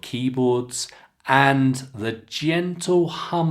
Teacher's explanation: Did you note I didn't connect keyboards and and I could have. I didn't because it was a natural end of the idea.